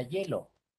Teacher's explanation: en la palabra hielo pueden notar que la vocal y no suena como vocal